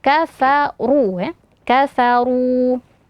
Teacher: r-nya karena berharakat damah maka dibaca tebal kafau ya kafaru kemudian karena r-nya setelahnya ada huruf wau sukun